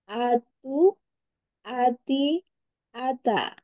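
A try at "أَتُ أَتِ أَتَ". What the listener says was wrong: ingat ada akhiran. Ada. Nah, itu mesti hilang. Mesti hilangin ya.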